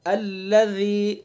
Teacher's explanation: اور یہ رال کو نرمی سے، بالکل نرمی سے، الذی ری، نرمی کے ساتھ، سختی ذرا بھی نہیں ہونی چاہیے، اگر ذرا بھی سختی ہو گئی تو پھر یہ زا بن جائے گا۔